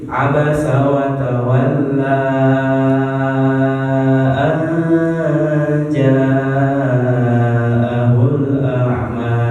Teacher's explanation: Jadi panjangnya menjadi 5 harokat, ya maksimal 5 harokat. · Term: mad jaiz munfasil